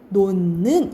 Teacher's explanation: 디귿과 니은이 만나면 니은이 무슨 소리니 콧소리잖아요 그치 비음이잖아 비음이 됩니다 그래서 결과적으로 어떻게 발음 나냐면 놓는 이렇게 발음이 나는 거야 그래서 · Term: 비음화